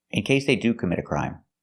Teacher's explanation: We hear the T in commit as a fast D. Commit a crime, because the T is between vowels when you link the words.